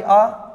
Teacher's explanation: द्वि मात्रिक में हमने लिया इसका बड़ा भाई आ तो इस आ को बोलने में ऐ से दुगना समय लगेगा क्योंकि इसको थोड़ा लंबा खींचना पड़ेगा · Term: द्वि मात्रिक स्वर